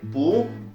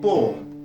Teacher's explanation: le son /u:/, lorsqu'il est suivi d'un R qui donnera plutôt /ʊə/, comme par exemple, avec Pool ou encore Poor.